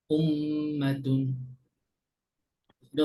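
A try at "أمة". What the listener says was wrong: আরেকটু ধরে রাখি, হ্যাঁ? মিম, মিম যখন থাকবে তখন একটু বেশি। মিম, মিম আর নুন, নুন যখন থাকবে তখন একটু বেশি ধরে রাখবো আমরা, হ্যাঁ? কারণ আমিন।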